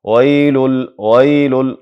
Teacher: ویل واو معروف تلفظ سي، شونډې مکمل راغونډې سي. ویل بدون له غونډولو د شونډو واو کچیري تلفظ کیږي یا ادا کیږي، دې ته مجهول تلفظ ویلی کیږي